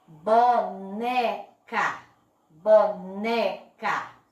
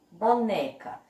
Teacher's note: Percebam que a sílaba que eu falei com mais força, que eu coloquei um pouquinho de força na minha boca para falar, foi o né. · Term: sílaba tônica